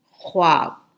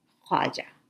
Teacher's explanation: وہاں واو کے بعد الف آیا ہے۔ ایسے الفاظ میں واو بہت ہلکا سا بولا جاتا ہے